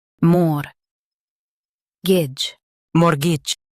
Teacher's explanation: Stress more and soften gitch.